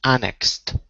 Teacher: the emphasis is on an, so it's annexed